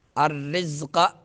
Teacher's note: زا میں سیٹی نکالیں گے، قاف کو پر پڑھیں گے